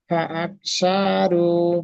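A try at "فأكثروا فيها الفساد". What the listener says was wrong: সা, সা টান হয়ে যাচ্ছে। ফাআকসারু, এখানে রু টান হবে শুধু, ও মাদ্দা রয়েছে। ফাআকসারু ফিহাল ফাসাদ।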